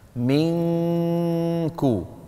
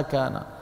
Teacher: إخفاء النون عند الكاف والقاف بالذهاب إلى المخرج تماما، لأن مخرج القاف والكاف بعيد والنون من طرف اللسان الأمامي.